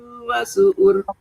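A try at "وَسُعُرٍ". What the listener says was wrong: Ibu tebalnya tuh kayak nggak naik pangkal lidahnya. Wasu'uru. Pangkal lidahnya naik.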